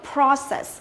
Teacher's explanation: Còn Mỹ đọc là process. Hơi khác nhau một tí nhưng mà trọng âm của nó đều rơi vào âm thứ nhất